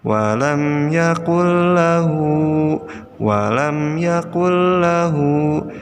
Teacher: ada nun sukun menghadapi lam nah dia jadi cara membacanya adalah Nun nya dimasukkan ke dalam huruf berikutnya yaitu alam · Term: idgam bilagunnah, Idgham bila gunnah